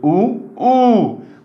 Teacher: हे बघा हवा सोडली याच्यामध्ये, ऊ ऊ. म्हणजे ह्या वेळेस दोन्ही ओठांचा तुम्हाला आधार घ्यावा लागला, म्हणून याला ओष्ठ वर्ण म्हणतात.